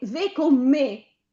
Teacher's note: dico due parole con una e stretta, vieni ve con me, me stretta, ci vuole l'accento, certo, ma l'accento chiuso, cioè l'accento acuto.